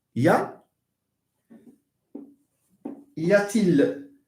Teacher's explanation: We say that the sound T is inserted between two vowels. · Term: insertion process